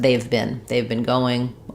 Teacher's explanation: have is a helping verb for another verb, so it's unstressed and it can get reduced